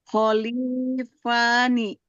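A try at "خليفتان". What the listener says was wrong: Kholifatani. Kan ada ta tadi, Bu.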